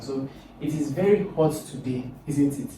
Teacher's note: So there is no doubt. So this has a falling intonation.